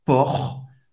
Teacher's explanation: tem o R que vai arranhar